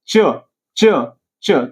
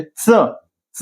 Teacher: जीभ जर वरती झाली, च, च, च, तर ते तालव्य, आणि च, च दाताच्या मुळापाशी जर यायला लागली तर ते दंत तालव्य